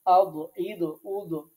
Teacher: জিহ্বার গোড়া তার ডান পাশ অথবা বাম পাশ, যে কোনো এক পাশ, তার বরাবর উপরে যে মাড়ি দাঁত আছে তার গোড়ার সাথে লাগিয়ে উচ্চারিত হয় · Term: দোয়াদ